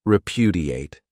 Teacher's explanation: This verb has 4 syllables, and the stress is on that second syllable,